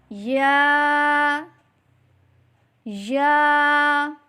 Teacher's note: زبان کے درمیان اور تالو کے درمیان سے ادا کریں